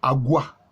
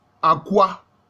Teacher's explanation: pour parler comme les linguistes, on dira que le G est allophone du K. Au lieu de dire Aqua, pour désigner les guerriers, ils ont dit Agua.